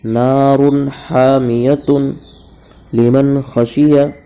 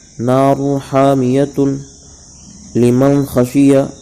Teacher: تنوین اور نون ساکن کی آواز کو ظاہر کر کے بلا غنہ کے جلد پڑھیں گے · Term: اظہار